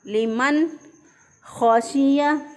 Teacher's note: खौ को मोटा पढ़ा और बाकी हरूफ जो हैं वो नॉर्मल होंगे